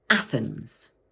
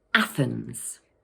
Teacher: This word has two syllables, Athens, and the first one is stressed. Watch out for that tricky th sound.